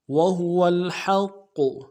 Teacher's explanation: قاف کے اوپر تشدید زور دیں گے، قاف کو موٹا ادا کریں گے